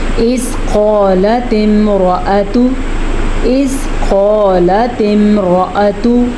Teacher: قاف کو موٹا پڑھنا ہے